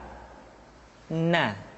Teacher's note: huruf na caranya menyentuhkan ujung lidah kita di antara posisi ro dengan la